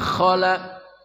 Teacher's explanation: kha dari ujung kerongkongan, khala. Wa idza khala, lamnya panjang matabi'i, khala.